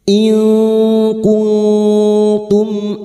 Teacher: Ikfa hakiki bertemunya nun sukun atau tanwin dengan salah satu dari huruf 15 ini termasuk huruf kaf dan huruf ta. Kita samarkan bunyi nun sukun dan mendengung selama tiga harakat